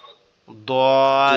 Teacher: জিহ্বার গোড়া থেকে উচ্চারিত হয় দদ